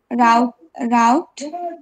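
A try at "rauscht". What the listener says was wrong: না রাউট না, এটা এস সেহানা শর মতো উচ্চারণ হবে, রাউস্ট।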